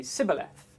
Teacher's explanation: in the Ephraimite language, there is no sh sound, there are only s sounds